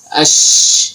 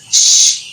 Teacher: Shin itu makhrajnya tengah lidah dengan tengah langit-langit. Jadi tekanannya di situ di tengah lidah.